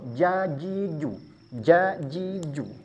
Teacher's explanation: Yang membedakan huruf jim ini sempurna. Diangkat, nempel kepada langit-langit mulut.